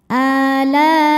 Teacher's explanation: Cara bacanya a-nya panjang dua harakat. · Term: mad badal